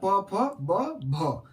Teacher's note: ये सभी में होंठ एक दूसरे को सटता है या कुछ क्रियाकलाप ये अपना चेंज करता है, आकार में चेंजिंग आता है, तो याद रखिएगा ये हो जाएगा ओट्स।